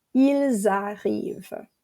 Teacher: Or il, we don't pronounce the S normally, but if the verb after it starts with a vowel, we're going to hear a Z sound. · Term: la liaison